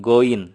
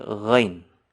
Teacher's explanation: Bukan seperti G dalam bahasa Indonesia, karena kalau G itu tidak ada anginnya. Kalau ghain itu renyah, pecah.